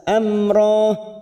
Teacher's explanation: m mim sukun bertemu ro Idhar syafawi kita baca jelas Amro ini namanya wakaf lazim Amro kita wakaf di sini hukumnya · namanya wakaf lazim Amro kita wakaf di sini hukumnya juga sama Mad iwad karena ada fathatain yang diwakafkan selain tak marbutoh panjangnya dua harakat